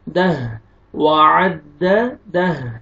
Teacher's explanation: وقف کی صورت میں ہا ساکن ہو جائے گا